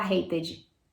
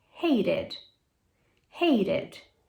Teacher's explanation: Então, hate, o ED dele vai ter som de id, e vira hated.